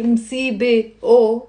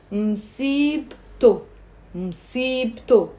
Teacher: The T, which is silent at the end of msibe, we end up pronouncing it. And it becomes msibto, msibto, two syllables, okay?